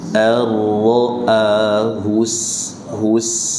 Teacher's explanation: sin sukun dibaca dengan infitah, dibuka, jangan dimonyongkan. Allahus hus, jangan dimonyongkan hus.